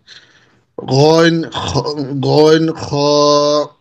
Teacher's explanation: তিন নম্বর মাখরাজ হলকের শেষ ভাগ হইতে